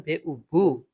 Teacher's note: যখন বলবেন বে উ বু, তখন ২ ঠোঁটের উচ্চারণটা হবে মানে ২ ঠোঁটের অন্তর এটা একটু ছোট হয়ে আসবে।